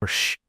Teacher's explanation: voiceless consonants don't cause vibrations. Try saying sh. You won't feel any vibrations. These are called voiceless consonants.